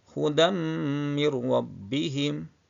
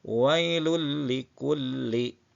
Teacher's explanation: Fatah t kasrah ataupun tah dengan huruf am Bil Gun setelahnya sehingga menjadi satu huruf yang bertasdid namun tidak dibaca dengan mendengung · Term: idgham Bila Ghunnah